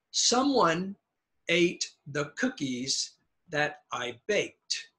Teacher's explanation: Now notice I is very low.